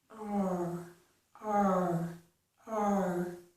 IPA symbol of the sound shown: ɹ